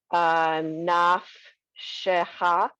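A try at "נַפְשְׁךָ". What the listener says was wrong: Perfect. Two together. First one silent. Second one you get to say it. Perfect.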